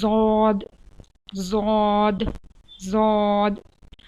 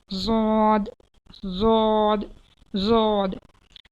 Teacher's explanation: comes out from the sides of the tongue and the roots of the upper molars